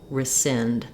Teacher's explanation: So in the word rescind, we have second syllable stress. The sind syllable is stressed, and so my letters RE are going to say a reduced vowel, rescind. You may hear people say rescind as well with the E sound, but the important thing here is that the sind is long and this first syllable is going to be quite short.